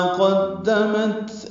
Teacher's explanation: قدمت میں قوف پر پڑھیں گے، دال باریک پڑی جائے گی، تا ساکن پہ ہمس ہوگا